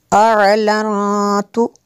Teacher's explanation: نون ساکن کے بعد حروف اخفا میں سے یہاں پہ اخفا ہوگا اس لیے یہاں پہ غنہ کریں گے۔